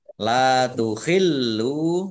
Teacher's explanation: Lamnya dibaca double, ada tasdidnya, ditekan biar tampak doublenya. La takhillu, lam domah wawu sukun mat tabi'i panjang 2 harokat.